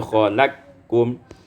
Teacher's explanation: Termasuk pada surat Al-An'am ayat yang kedua, khalaqakum, idghamul qaf fil kaf, diidghamkan qaf ada kaf menjadi khalaqkum